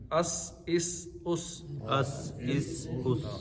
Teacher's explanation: سیٹی کی طرح آواز سین میں نکلتی ہے